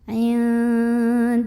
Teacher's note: Karena ada alif lam yang ketemu sama huruf syamsiyah yaitu lam. Maka alif lam ini kita lewat saja, tidak perlu dibaca. Dari dal langsung masukkan ke lam. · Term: alif lam syamsiyah